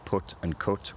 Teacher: pronouncing the words put and cut with the same vowel as each other characterizes Northern accents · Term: lack of a foot strut split